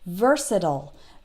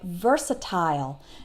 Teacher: American English speakers will tend to pronounce it like I just did versatile that last part sounds like ol versatile but British English speakers might tend to pronounce it like versatile